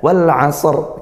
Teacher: dia dialirkan karena Shad dia sifatnya mengalir ngalir nafasnya ngalir suaranya